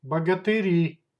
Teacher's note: Plural, богатыри, богатыри. Stress goes to the last syllable.